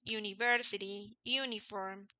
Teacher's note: no tienen un sonido vocal sino consonante y es como una J